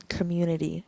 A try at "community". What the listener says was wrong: because you you keep saying it with a U. Just say it normal. Community. That's with a U.